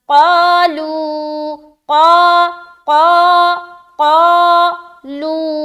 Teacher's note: قاف موٹا حرف ہے لہٰذا الف بھی موٹا پڑھا جائے گا